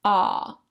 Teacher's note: it's the widest open vowel, ah, almost like a yawn.